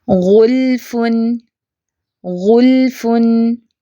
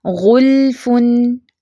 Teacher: لام ساکن ہے، درمیانی سی آواز چلے گی اس کی